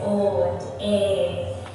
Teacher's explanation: they have these really long, pure vowel sounds, so they say O and A in the Yorkshire accent.